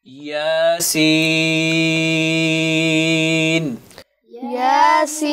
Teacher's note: یا آپ نے 2 حرکات تک اس کو لمبا کرنا ہے، اور سین اس کو آپ کو 6 حرکات تک لمبا کرنا ہے، چونکہ یا مدہ کے بعد نون ساکن ہے۔